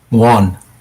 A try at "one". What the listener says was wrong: You said like one, like a little bit longer of a sound.